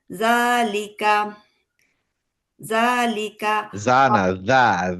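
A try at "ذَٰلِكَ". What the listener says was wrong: যা না, দা, দা। দা।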